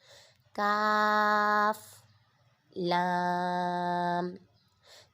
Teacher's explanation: یہ کاف باریک پڑھا جائے گا، تالو کے نرم حصے سے ادا ہوتا ہے۔